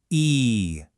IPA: iː